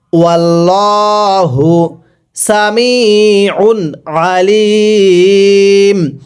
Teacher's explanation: আইনগুলো উচ্চারণ করার সময় গলার মাঝখানে একটু চাপ দিয়ে পড়তে হবে